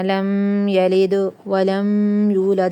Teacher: دال ساکن ہے تو دال پہ کیا ہوگا؟ قلقلہ، اوکے، ہلا کے پڑھنا ہے۔